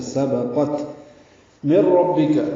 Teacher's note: قاف پر ہے، تا ساکن پہ ہمس ہے، سبقت من ربک، نون ساکن کے بعد را آنے کی وجہ سے ادغام ہو رہا ہے · بعد سین آنے کی وجہ سے اخفا ہے، قاف پر ہے، تا ساکن پہ ہمس ہے